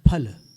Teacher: फल बोलना दोनों होंठ मिलाकर के